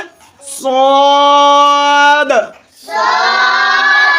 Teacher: সদ হরফ হচ্ছে জিহ্বার আগা সামনের নিচের দুই দাঁতের পেট ও আগার সঙ্গে লাগাতে হবে।